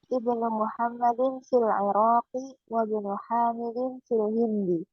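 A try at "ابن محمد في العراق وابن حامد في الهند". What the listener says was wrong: Mumtaz.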